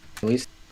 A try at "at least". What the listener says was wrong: Do you kind of hear the E there instead of a I?